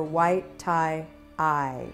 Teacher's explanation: white starts at olive sock ah, but instead of moving to blue, white moves up to green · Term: big mover